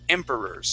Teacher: the accent is at the very beginning of the word